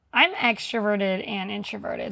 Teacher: So, do you hear she's using vocal fry?